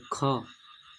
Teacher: ख बोलिएगा ना तो मुह से अधिक वायु निकलेगा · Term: महाप्राण व्यंजन